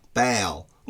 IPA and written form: bæl (ball)